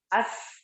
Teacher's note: Sin mengalir suara dan nafas.